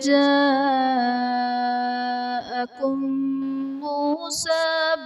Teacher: میم ساکن کے بعد دوسری میم ہے تو یہاں پر ادغام شفوی کا قاعدہ ہوگا، یعنی میم ساکن میں ہم غنہ کر کے پڑھیں